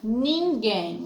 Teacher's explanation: A sílaba forte é gen